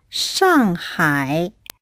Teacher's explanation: They're fourth, falling, and third, fall and rise.